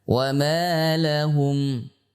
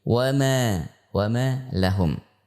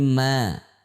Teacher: huruf mim termasuk huruf yang istifal dan infitah, yaitu huruf tipis, ya, huruf tipis. Sehingga kita mengucapkan, misalkan wa ma lahum, bukan wa ma lahum, bukan, tapi wa ma lahum.